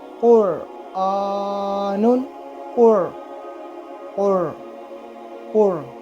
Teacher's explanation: منہ جو ہے وہ گول ہوتا ہے اور را کی آواز منہ بھر کے آنا